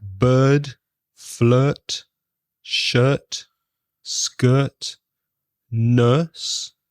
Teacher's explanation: it's exactly the same as the schwa, but it's longer. It's a longer vowel sound.